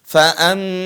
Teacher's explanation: Suara desis atau suara mengalirnya napas ketika mengucapkan huruf ta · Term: hamas